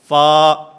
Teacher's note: ان ثنایا علیہ کے کنارے جس وقت نیچے والے ہونٹ کے اندرونی حصے سے ٹکراتے ہیں تو اس سے فا ادا ہوتا ہے